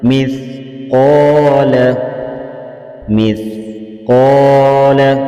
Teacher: सा को अदा करते हुए सीटी की आवाज़ नहीं निकालनी